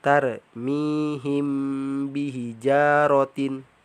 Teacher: apabila huruf mim sukun bertemu dengan huruf ba maka cara membacanya yaitu didengungkan sepanjang dua harokat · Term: Ikhfa Syafawi